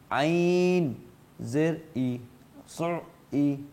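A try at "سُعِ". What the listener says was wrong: ই ই আপনারটা হামজা হয়ে গিয়েছে। ই সু ই।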